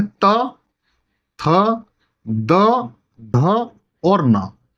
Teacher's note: ऐसे व्यंजन जिनका उच्चारण करते समय हमारी जीवा है वो दांतों को स्पर्श करे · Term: दंतीय व्यंजन